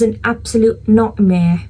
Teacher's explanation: If you observe when it comes to R at the end of the word, in the middle of the word, I'm not going to pronouncing it. Whenever there is a T like nightmare, absolute, I'm not pronouncing it. So whenever there is T or R in the middle or the end of the word, I'm not going to pronounce it, considering it as a glottal stop.